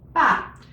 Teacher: at the end, when you do the fourth tone, ba, you have to cut it off.